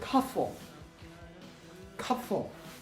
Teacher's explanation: If there's a cluster PF, natives do not say PF. Natives instead say it as a fricative